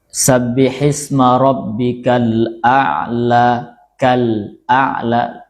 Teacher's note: kalau yang izhar qamariah itu izhar jelas lamnya ya. Lamnya jelas dibaca